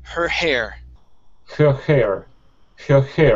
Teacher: light H's, really soft, like a breath